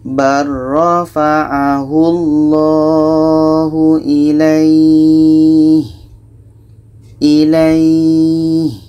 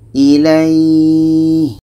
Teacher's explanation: kita panjangkan minimal 2 harakat baru matikan huruf yang terakhir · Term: mad lain